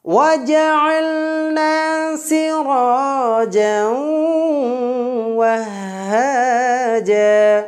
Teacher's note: তানবিনের পরে ওয়াও বর্ণটি থাকার পরিপ্রেক্ষিতে আপনারা দেখতে পাচ্ছেন তানবিনের উচ্চারণটাকে অ এর ভিতরে ইদগাম করে যুক্ত করে মিলিয়ে গণ্য করে পড়ব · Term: ইদগামে বাগুন্না